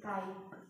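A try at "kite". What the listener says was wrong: काइट, अच्छे से बोलो, ट भी सुनाई देना।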